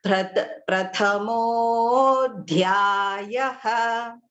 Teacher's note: So pratamaha plus adhyayaha, that ha visarga will change into O with a avagraha